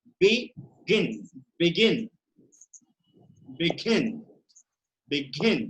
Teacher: So begin contains 2 syllables and the final consonant is preceded by a vowel and the word is accented on the last syllable. The stress is on second syllable, on the last syllable.